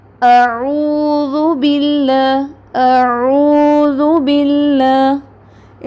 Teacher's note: हमज़ा और आइन, हमज़ा सख्त, आइन सॉफ्ट